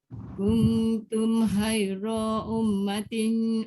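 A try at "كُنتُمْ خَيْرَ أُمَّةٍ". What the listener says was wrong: Ra pendek dan tebal. Jangan panjang. Ra dia tak boleh.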